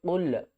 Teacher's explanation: قاف کو ہم لام کے ساتھ ملائیں گے، قاف کو پر پڑھیں گے، قاف لام پیش قل۔